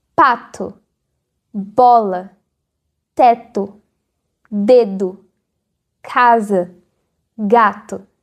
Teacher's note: Em cada uma dessas, as palavras têm um fechamento total, seguido de uma explosão de ar. Você consegue sentir isso se colocar a palma da sua mão na frente do seu rosto. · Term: oclusivas